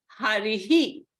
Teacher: the vowel before the visarga is e so the pronunciation of the visarga will be a he sound